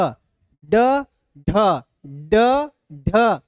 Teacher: जीभ टच कर रहा है मूर्धा को, मूर्धन्य। यानी ये मूर्धन्य व्यंजन है।